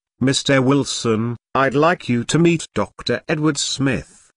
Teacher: notice the rising intonation on Mr Wilson which she's used to address someone